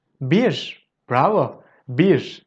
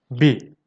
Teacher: But in daily speech, we usually drop the re at the end and then it becomes bi.